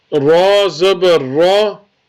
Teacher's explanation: when ra has a zabar or a pesh, you have to read it with full mouth